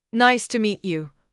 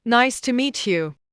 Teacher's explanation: Learner one says it flat. Nice to meet you. Low energy, no emotion. · Low energy, no emotion. Learner two says it warmly. Nice to meet you. Rising tone smile.